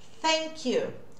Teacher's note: É esse sopro, é esse TH, que a gente fala que não usa a voz